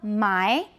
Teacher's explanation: an initial m for an example of a bilabial nasal